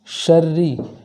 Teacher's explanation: شری کے اندر جو را مشدد ہے اس را مشدد کو باریک پڑھیں گے، اس لیے کہ اس کے نیچے زیر ہے۔